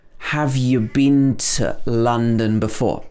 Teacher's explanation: been could be pronounced bin, and to could be pronounced t.